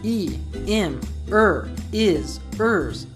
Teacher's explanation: we often drop the beginnings of pronouns like he, him, her, his, hers, and them, so they become e, im, is, ers, What's more, when a T is between 2 vowel sounds in American English, it sounds like a D.